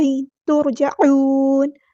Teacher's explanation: ہے ہمارا ترجعون میں ہیوی لیٹر ہے، پورا ادا کرنا ہے، عین کو وسط حلق سے ادا کرنا ہے